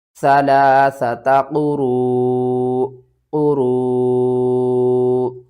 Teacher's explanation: نیچے والی دو زیر ختم کر دیں گے، فا ہم نے ساکن کرنا ہے، اور جب حمزہ ساکن ہو جائے گی تو جب بھی حمزہ ساکن ہوتی ہے تو اس کو جھٹکے کے ساتھ ہم پڑھتے ہیں